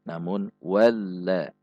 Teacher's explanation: Perhatikan sifat dan makhraj huruf lam, tidak dibaca walla, tidak juga dihentak walla, namun walla. Walla, ada ayunan sedikit karena sifatnya yang bainiyah.